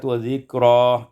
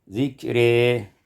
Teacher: Pada ayat yang ke-31, zikra, imalatu fathatir ra wal alif, dibaca imalah fathah ra dan alif menjadi zikri.